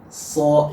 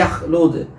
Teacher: walaupun tidak ada vokal o, hampir bervokal, mirip-mirip ya dengan o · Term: isti'la